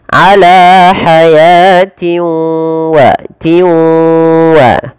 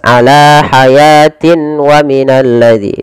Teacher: Cara membacanya yaitu memasukkan tanwin ini kepada huruf waw, karena idgham itu artinya memasukkan. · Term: idgham bi gunnah